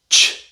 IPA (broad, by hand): tʃ